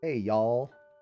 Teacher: if you're kind of in the southern states it's hey y'all they connected together